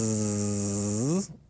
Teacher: your vocal cords are active your vocal cords are closed and vibrating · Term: voicing